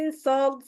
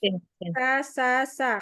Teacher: Jadi dirasain tuh ujung lidahnya hampir menempel di gigi seri bawah. Tapi karena dia huruf isti'lah, jadi pangkal lidahnya tuh naik ke atas.